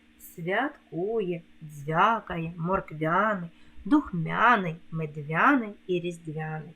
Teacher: саме в цих словах губні звуки пом'якшуються